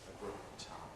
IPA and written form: ə ˈgʊd̚ ˈtaɪm (a good time)